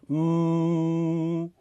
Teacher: closes your lips and uses the mouth and the sinus cavities as a resonating chamber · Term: M sound